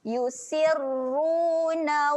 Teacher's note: Ru kat sini ro yang tebal, muncungkan mulut.